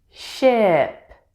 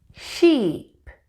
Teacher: Notice that if I say the short I vowel sound for a longer period of time, it still does not sound the same as sheep